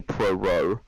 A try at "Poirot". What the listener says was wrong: You said pro-ro, it's Poirot.